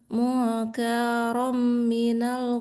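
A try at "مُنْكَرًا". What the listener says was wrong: kayaknya nggak panjang. Mungkarom nggak panjang.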